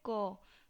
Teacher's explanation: जैसे हम बोल रहे हैं क, ठीक है, तो क जो ध्वनि है उसका उच्चारण हम कहाँ से कर रहे हैं, कंठ से कर रहे हैं, गले से आवाज़ आ रहा है, यानी कि वो जो क ध्वनि है वो कंठ को स्पर्श करते हुए मुख से बाहर निकल रही है